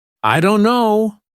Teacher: the T sound is dropped completely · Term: dropped sounds